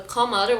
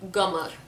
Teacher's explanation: So the qaf sound in a lot of Khaliji dialect and countries, it's pronounced as g sound.